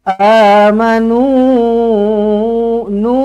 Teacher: Sini baca mad jaiz munfasil. Berapa harakat? Baca dengan 4 ataupun 5 harakat.